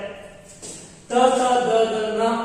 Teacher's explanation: ಏನ್ ದಂತ್ಯ ಅಂತಂದ್ರೆ ಹಲ್ಲುಗಳಿಗೆ ನಾಲಿಗೆ ಸ್ಪರ್ಶ ಮಾಡುತ್ತೆ. ತ ತ ದ ದ ನ ಅನ್ನೋ ಅಕ್ಷರಗಳಿಗೆ ಉಚ್ಚಾರಣೆ ಮಾಡಬೇಕಾದಾಗ ನಮ್ಮ ನಾಲಿಗೆ ಹಲ್ಲುಗಳನ್ನ ಸ್ಪರ್ಶ ಮಾಡುತ್ತೆ. ಹಾಗಾಗಿ ದಂತ್ಯ ಧ್ವನಿಗಳು ಅಂತ ಕರಿತೀವಿ.